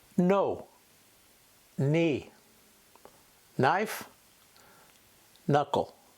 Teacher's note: The k is silent, and the single sound is /n/, the N.